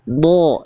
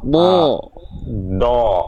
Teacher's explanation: Jadi mulut kita cukup dibuka, tebalnya itu karena dia pangkal lidah, bertumpu di pangkal lidah naik.